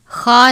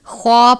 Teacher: کرتے، ایدیہم وما خلفہم، الف سے پہلے زبر ہے، الف مدہ، خا کو پر پڑھتے ہیں کیونکہ خا حروف مستعلیہ میں سے ہے ، خا کو آپ نے خا نہیں پڑھنا بلکہ خوا پڑھنا